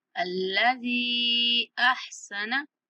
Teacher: अल्लज़ी अहसन, यहाँ अलिफ खाली है, अलिफ के ऊपर हमने जबर के साथ इसको हमजा बना के पढ़ना है। अल्लज़ी, अल्लज़ी, जाल को 3 सेकंड तक खींचना है।